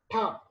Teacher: When you pronounce ta sound, ta, okay, you are touching, your teeth ridge with your tongue. You are stopping the air flow.